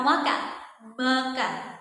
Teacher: bunyi nasal atau bunyi sengal ini dia aliran udaranya itu keluar melalui rongga hidung